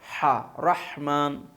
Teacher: وسط حلق سے ادا ہوتا ہے، حلق درمیانی حصے سے